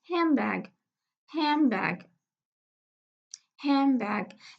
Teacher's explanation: we have a three consonant cluster, that the middle de has been elided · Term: deletion